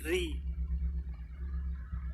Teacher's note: ketika kasrah baru dibaca tipis RI bukan RI tapi Ri ini nanti ada hukumnya tersendiri ketika